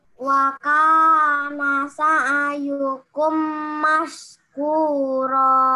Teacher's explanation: Perhatikan mim sukun bertemu mim. Dia wajib dibaca dengung. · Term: idghamnya